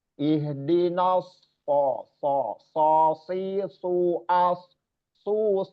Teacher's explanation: Makhrajnya berada di ujung lidah. Posisi ujung lidah kita hampir menempel atau menempel sedikit di ujung gigi seri atas bagian belakang ya shod. Dan dilengkapkan disempurnakan dengan sifat istillanya yaitu mengangkatnya anak lidah ke langit-langit atas bagian dalam.